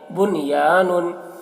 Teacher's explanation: نون ساکن کے بعد یا ہے اسی کلمہ میں تو یہاں پر بھی اظہار کریں گے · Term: اظہار مطلق